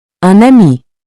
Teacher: Notice how the N links to the vowel. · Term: Liaison